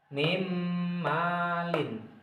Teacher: Kita harus memasukkan suaranya nun ini menjadi huruf mim. Ini yang nun mati ya. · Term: idgham fi gunnah